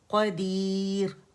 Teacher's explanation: یہ تنوین جو ہے دمتین وہ حذف ہو گئی, ختم ہو گئی, را سکون کے ساتھ ہو گیا